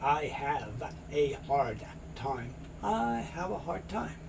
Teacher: two very similar sounds a d and a t you're only going to hear one